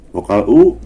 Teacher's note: Vokal U tinggi, dia di atas, tapi lidahnya ke belakang dan bulat.